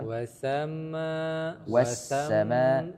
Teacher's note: ma-nya panjangkan lagi sampai 5 harokat. 5 hitungan ketukan.